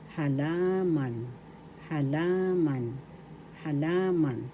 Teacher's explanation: The accent is in the second syllable, halaman, halaman, halaman.